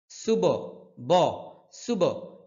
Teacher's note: এখানে বা এর মধ্যে কলকলা হবে কলকলা মানে প্রতিধ্বনি